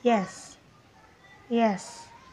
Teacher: jadi ketika ia diucapkan dengan kata Normal itu pengucapannya yes yes hanya turun sedikit